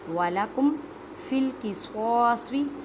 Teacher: سواد کو ادا کرتے وقت خیال رکھیں کہ سین کی آواز نہ آئے کیونکہ حروف مستعلیہ یعنی موٹے حروف میں ہے